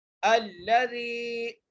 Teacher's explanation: زال کو اس لیے کھینچنے ہیں کیونکہ جائے مدہ ہے یہاں پر